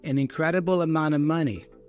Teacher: The T goes away, I pronounce the N instead. And then remember the of preposition can get reduced to a schwa sound. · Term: N-T combination